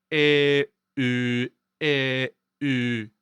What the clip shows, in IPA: ɛ œ ɛ œ